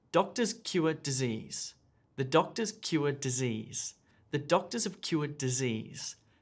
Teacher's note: notice how the same duration of time is used to say each sentence even though each sentence gets longer and longer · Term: rhythm